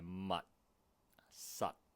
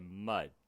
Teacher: 我哋通常呢就會用條脷去掂牙槽脊，即係我哋上面嗰棚牙後面嗰個凹凸位去作停頓嘅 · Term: 爆破音